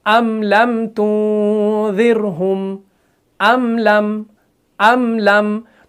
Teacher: मीम को भी ऐसे ही अदा करते हैं, ना ज्यादा खींचते हैं और ना ही फौरन आवाज को बंद करते हैं। जैसे अम लम तुंज़िरहुम अम लम, तो मीम साकिन है ना, मीम साकिन के बाद लाम है, तो हम इस मीम को खींचते नहीं है।